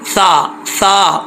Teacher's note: آپ کی زبان کی نوک اوپر والے دانتوں کے اندرونی کنارے سے لگے گی تو یہ سا پڑھا جائے گا · اب یہاں پر سا ہے جس کے اوپر 3 نقطے آتے ہیں اور یہاں پر سیٹی نہیں نکلنی چاہیے. سا میں سیٹی نہیں ہوتی، سین میں سیٹی ہوتی ہے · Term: بغیر سیٹی